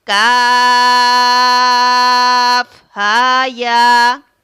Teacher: طول کرتے ہیں، یعنی 3 الف کے برابر ہم اس کو کھینچتے ہیں۔ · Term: مد لازم